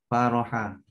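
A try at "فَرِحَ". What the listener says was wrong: Fariha Jadi jangan baca faroha ya, tapi fariha. Ya, fariha. Ingat aja kalau makan bakso tahu ada paria.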